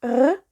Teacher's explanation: some people would use a r sound in their throat, like this, r.